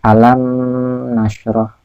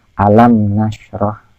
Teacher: Yang betul adalah alam nasroh, jadi mimnya jelas tanpa dengung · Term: izhar syafawi